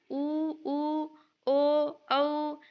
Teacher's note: जिनके उच्चारण में होठों की आकृति वृत के समान बनती है जैसे बोलेंगे ना उ उ ओ औ तो आपका होठ ना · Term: वृताकार